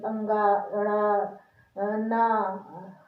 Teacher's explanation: ऐसा लगता है नाक से हवा निकल रही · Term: अनुनासिक